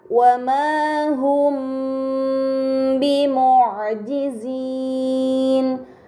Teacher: terdapat mim sukun bertemu dengan huruf ba, ini dinamakan ikhfa syafawi. Maka mim sukun harus dibaca samar dengan gunnah yang dipanjangkan